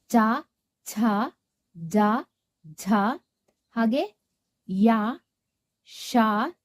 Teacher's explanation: ಚ ವರ್ಗದ ಅಕ್ಷರಗಳು ದವಡೆಯಿಂದ ಉತ್ಪತ್ತಿಯಾಗುತ್ತವೆ. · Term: ತಾಲವ್ಯ ಅಕ್ಷರಗಳು